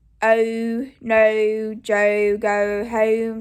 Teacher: practicing the oh diphthongs so i usually would say with a little ooh you at the end